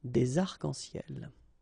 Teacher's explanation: we don't really pronounce this final S, so phonetically it's almost the same, but then we've got this liaison between the two